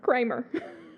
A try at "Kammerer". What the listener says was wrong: There's no R before the A, though.